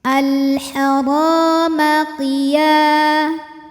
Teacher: Ra hukumnya adalah mad tabi'i zahiri karena ada alif yang didahului harokat fathah. Cara membaca ro-nya ini adalah dipanjangkan 2 harokat.